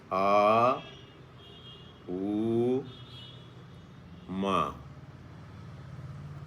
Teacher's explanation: जब हम आ कहते हैं तो पूरा मुंह खुलता है, होंठ बहुत दूर दूर चले गए। जब ऊ ऐसा करते हैं तो होंठ पास आ गए, और जब माँ बोलते हैं, माँ बोलते समय दोनों होंठ बंद हो गए